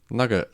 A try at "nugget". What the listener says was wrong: You know the second vowel is an E, not a U.